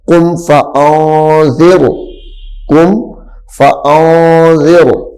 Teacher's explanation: جب را ساکن ہو جائے گا آخر پہ، را خود بخود موٹا ہو جائے گا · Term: را موٹا